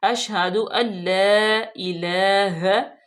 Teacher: ला को हम दो हरकत के बराबर लंबा करेंगे क्योंकि लाम के ऊपर खड़े जबर है।